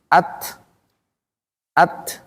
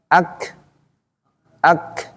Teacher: sekalipun dari sisi suara tidak mengalir dia, tapi ada udara yang mengalir setelahnya. Jadi at, jadi harus ada yang keluar tuh. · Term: hams